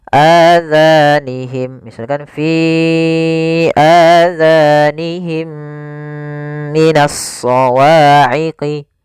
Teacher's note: suara mim yang pertama masukkan kepada mim kedua dan ditahan. Masukkan mim kedua, ditahan suara gunnahnya. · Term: idgham mim, Idgham Mim